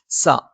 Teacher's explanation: സ നാവിന്റെ കൂർത്ത അറ്റത്തിന്റെ മുകൾ ഭാഗം 2 വരി മുൻപല്ലുകൾക്കിടയിലായി നിൽക്കുകയും നാവിന്റെ അറ്റം ചെറുതായി താഴെ മുൻപല്ലിന്റെ ഉൾഭാഗത്തുള്ള പള്ളയിൽ സ്പർശിക്കുകയും ചെയ്യും.